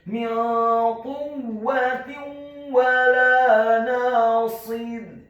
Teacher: Dalam hal ini adalah huruf wawu yang fathah, maka hukum bacaannya adalah memasukkan dengan dengung idgham bi gunnah.